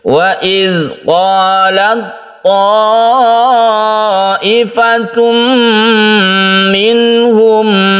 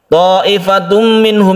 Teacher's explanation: Idgham artinya masuk. Tanwin ini masuk ke mim sehingga melebur menjadi tasydid mim, dan kita panjangkan, itulah bi gunnah atau dengan dengung. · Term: idgham bi gunnah